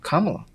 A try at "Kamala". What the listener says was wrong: Not that slow, but Kamala.